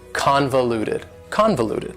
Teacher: four syllables and the stress is on the first syllable convoluted that second syllable again has that schwa sound that reduced vowel sound